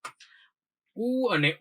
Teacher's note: ઉ અને ઉ એટલે હોઠ સેજ આડો ઓળો થશે. ઉ અને ઉ હોઠમાંથી બોલે છે, એટલે એને આપણે ઓષ્ટ્ય કીધું.